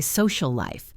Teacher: They finish the L in social, stop, and then start the L in life. This creates a tiny awkward gap.